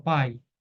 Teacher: o a é vogal o i semivogal porque o a é forte